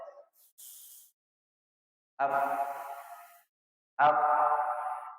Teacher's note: tidak ada getaran pada kedua pita suara kita dan banyaknya udara yang mengalir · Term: huruf hams